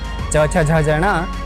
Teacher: तालव्य कहे गए क्योंकि इनके उच्चारण के समय जीभ तालवे से लगती है।